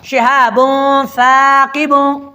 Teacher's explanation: ابھی شہابوں میں بن نہیں پڑھ رہا بلکہ شہابوں، ناک میں آواز لے کے جا رہا ہوں، یعنی نون کو بالکل ظاہر کر کے نہیں پڑھ رہا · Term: اخفا